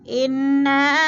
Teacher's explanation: اِنَّا انا کی نون مشدد ہے، غنہ کریں گے، سختی سے جما کر پڑھیں گے، اور نا کے آگے جو ہے نا الف مدہ، آگے حمزہ آگے ہے دوسرے کلمے میں، تو ادھر مد منفصل ہے، 4 الفی مد ہے، 4 الف کے برابر ہم نے اس کو کھینچ کر پڑھنا ہے۔